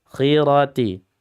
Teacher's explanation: Khi isti'la dia tetap tafkhim meskipun dalam kondisi kasrah.